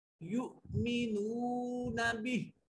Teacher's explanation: حمزہ کے اوپر جزم ہے, حمزہ کو جھٹکے سے ادا کریں گے